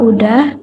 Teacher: kesalahan ee mengucapkan kata udah analisisnya analisisnya fonologis eh terjadi penghilangan fonem konsonan S pada kata sudah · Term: gejala elisi